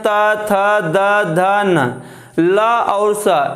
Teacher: ता, था, दा, धा, न। ला और सा, इनका उच्चारण स्थान दंत है